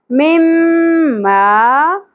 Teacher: میم مشدد غنہ ہوگا اور الف حرف مدہ ایک الف کے برابر کھینچنا ہے